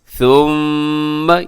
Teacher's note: یہاں میم مشدد پہ غنہ کیجیے گا